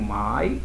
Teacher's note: o A é forte, o I é fraco, vogal semivogal de tom decrescente